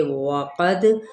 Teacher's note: واو ہونٹ گول کرتے ہوئے، قاف پر ہے، دال پہ کلکلا